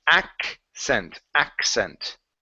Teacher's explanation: So when we pronounce this word, there's the double C. Okay, so the first one is going to be a K sound. The next one is going to be like a double S.